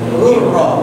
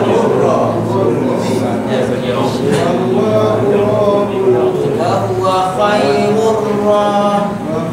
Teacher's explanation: Rul tak bunyi, jangan bunyi rul, salah.